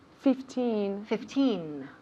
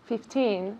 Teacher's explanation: with numbers when we have 15 16 17 18 19 the emphasis falls on teen